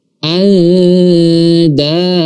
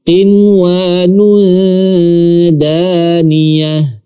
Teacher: ketika nun mati atau tanwin bertemu dengan huruf dal, ikhfa-nya tipis karena huruf dal adalah huruf tipis.